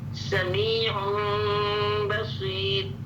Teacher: میم کے لیے ہم پورا پریس نہیں کریں گے. میم کو کلیئر نہیں پڑھیں گے بلکہ میم کو چھپی ہوئی آواز سے پڑھیں گے